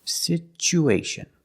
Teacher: so the T makes a CH sound like chicken situ situation because there's no stress on the U we change the T to the CH sound